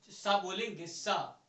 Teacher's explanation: तो मसूड़ा में जो है जीभ हमारी पकड़ती है, इसलिए जो है ये मसूड़ा से निकलता है। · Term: उष्म व्यंजन